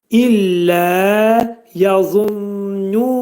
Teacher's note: Za hərfinin məxrəci burada dil yuxarı damağa dəyər-dəyməz şəkildə qalın za hərfini deyirik. zanın, qalın za hərfinin məxrəcindən çıxıb incə nun səsinin məxrəcinə düşürük.